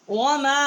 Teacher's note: وما میم الف مد زبر ما، چھوٹی مد ہے. 3 الف جتنا یہاں ہم نے آواز بلند کی ہے.